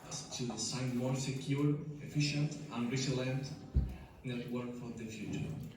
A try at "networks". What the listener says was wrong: Network or networks? It's just at the end of syllables. So there are still a few problems though.